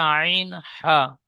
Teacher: কণ্ঠনালীর মাঝখান হতে উচ্চারিত হয়